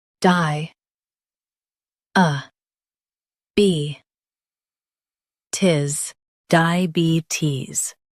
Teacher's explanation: Emphasize be and soften tis.